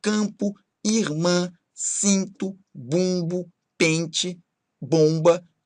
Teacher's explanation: produzidos com o ar saindo ligeiramente pelas fossas nasais, ou seja, pelos nossos narizes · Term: sons nasais